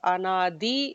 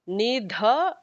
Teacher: there are two das, Anadi, the regular da, the Alpa Prana, Nidha would be the second Mahaprana